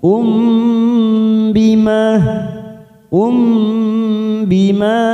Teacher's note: mim sukun bertemu ba ini kita dengungkan tiga ketuk kita tekan siap masuk pada huruf ba namanya bacaan Ikhfa Syafawi Um Bima